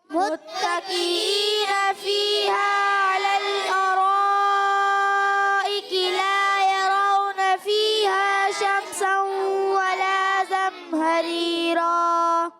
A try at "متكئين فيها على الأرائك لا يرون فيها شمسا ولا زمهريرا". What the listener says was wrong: جی دیکھیں غنہ چھوڑ دیا.